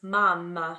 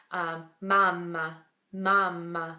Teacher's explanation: the M is produced by being really lazy just closing your mouth